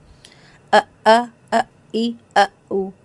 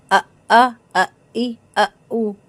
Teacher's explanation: हमजा की आवाज हलक के आखिरी हिस्से से आएगी।